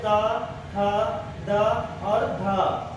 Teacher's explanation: दंत व्यंजन जो है दांतों पर जीभ टकराती है, उनके प्रभाव से इनका निर्माण होता है।